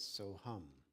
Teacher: when you're breathing in there's a sibilant or an S sound and when you're breathing out there's an aspirate or H sound and in Sanskrit that they would put those two sounds together